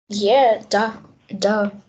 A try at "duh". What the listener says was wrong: Duh. H на самом деле. Duh. Не четко да, а именно duh. H как на выдохе делает.